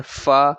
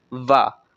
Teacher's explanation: इन वा में जो फा है ये वाला लैब्योडेंटल ये वॉइस लेस है, और जो वा है ये वॉइस्ड है, और इनकी प्लेस ऑफ आर्टिकुलेशन जो है that is upper teeth with lower lip, क्योंकि इनकी प्रोनाउंसिएशन में अपर टीथ और लोअर लिप नीचे वाला जो लिप है वो इन्वॉल्व होते हैं। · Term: लैबियोडेंटल्स